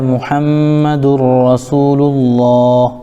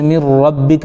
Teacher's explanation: ادغام تو ہو رہا ہے لیکن غنہ نہیں ہو رہا ہے، بغیر غننے کے ادغام ہو رہا ہے